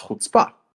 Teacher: it's supposed to be pronounced with the second syllable stressed